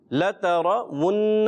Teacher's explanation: واو پر ہونٹ گول کریں گے، حرکات کو بغیر کھینچے ادا کریں گے